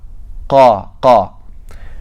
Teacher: Well, if you look at the diagram, and even when you feel it, you'll notice that when you pronounce qaf, the back of your tongue is touching the soft palate